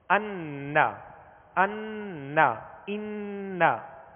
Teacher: ناک میں آواز لے جا کر ایک الف کی مقدار ٹھہریں گے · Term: غنہ